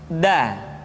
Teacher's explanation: Da diucapkan dengan menyentuhkan ujung lidah kita dengan bagian gusi-gusi dua gigi seri bagian atas. Da. Nah, kesalahan yang sering dilakukan adalah menyentuhkan ujung lidah dengan langit-langit. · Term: huruf da